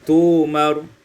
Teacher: Pada ayat 102, tu'maru ibdalul hamzati wawan, ditukar hamzah itu dengan waw sehingga kita baca tu'maru